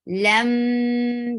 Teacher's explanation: you are keeping the sound in your nose. And it is for 2 haraka long. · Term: gunna